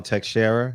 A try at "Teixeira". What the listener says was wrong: By the way, the X is silent. It's Teixeira.